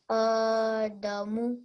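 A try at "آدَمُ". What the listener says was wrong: Very good. Excellent.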